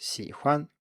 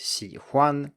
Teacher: in mainland standard, it's 喜欢 with a neutral tone on 欢, whereas in the Taiwan standard, it's 喜欢 with a first tone on 欢